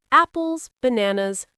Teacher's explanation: For the first items, your voice goes up.